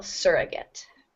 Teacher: the stress falls on the first syllable